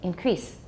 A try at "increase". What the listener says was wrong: Okay, that's common in Taiwan. Increase. You make it too long, then the S sounds like a Z. There's no Z. It's voiceless, so E is a little bit short. Increase.